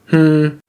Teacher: H is a letter that's only paired with the others to modify it with a voiceless nasal sound. In other words, just exhale through your nose.